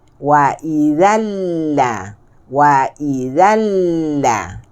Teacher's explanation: Tanwin. Tak selari jumpa dengan lam. Dan lamnya ada tasydid. Maka ia jadinya idgham bila gunnah kamil.